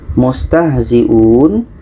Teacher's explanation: u diperpanjang oleh waw sakinah